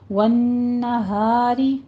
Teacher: والنہاری، نون مشدد ہے، غنہ واجبہ کریں گے، ہا میں الف مدہ اور را مرقق پڑھی جائے گی، باریک ہو جائے گی